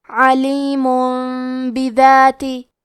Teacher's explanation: با حروف القلب میں سے ہے، قلب کا معنی ہے بدل دینا، تو ہم تنوین کو ہلکی میم میں بدل کے اور غنہ کے ساتھ یہ حکم کو ادا کریں گے